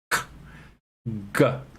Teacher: You hold it and let the air come out. So it's velar because it's in the velum in the back of your mouth.